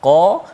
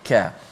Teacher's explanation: qaf dengan kaf itu makhrajnya dekat sangat, di mana di pangkal lidah kita tu qa, depan sedikit ka. Maka walaupun makhraj dekat tetapi dia punya sifatnya berbeza.